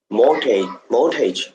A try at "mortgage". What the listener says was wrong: Mortgage. You don't really pronounce the T.